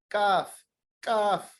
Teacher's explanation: It is pronounced from the root of the tongue.